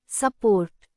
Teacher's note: In the word support, the first part, su, is unstressed. The vowel u doesn't sound like u or o, it changes into a soft a. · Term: schwa